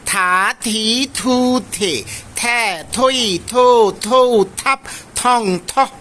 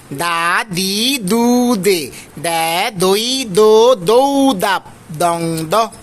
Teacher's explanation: দন্ত ধ্বনি যেগুলো আছে ত থ দ ধলো পড়ার সময় আমাদের জিভাটা দাঁতের সাথে এসে লাগবে